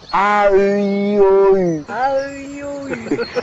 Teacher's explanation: la fréquence est toujours la même et c'est juste la caisse de résonance qui change? La forme de la bouche aussi.